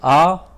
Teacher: तो कंठ में हमारा आ जाएगा छोटा आ और बड़ा आ। यानी हम जब आ बोलते हैं, आप जब आ बोलते हैं तो आपके कंठ से आवाज़ आती है।